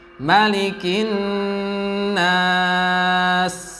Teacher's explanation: Kemudian jangan lupa di situ nun tasydid digunnahkan agak lama